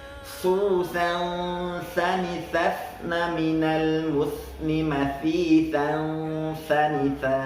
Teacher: Di sini ketika nun mati atau tanwin bertemu dengan huruf tha, maka suara nun mati ataupun suara tanwinnya itu kita samarkan dan kita dengungkan. Dan jangan lupa ketika kita sedang menyamarkan dan mendengungkan suara nun mati dan tanwin, lidah kita sudah persiapkan kepada huruf selanjutnya, itu huruf tha.